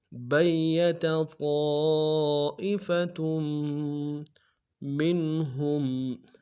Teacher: من عندک بیت طائفۃ، بیت یا کے اوپر شد زور دیں گے، طائفۃ میں طا کے ساتھ الف مدہ ہے، الف مدہ کے ساتھ مدہ متصل ہے، کم سے کم 3 الف کی مقدار میں کھینچیں گے